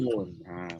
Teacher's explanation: dia tak boleh keluar lidah aja, dia kena keluar hidung sekali. Barulah cukup sempurna nun tu. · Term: huruf Nun